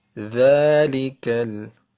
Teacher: Dhal letter will be pronounced using by tip of the tongue and upper front teeth.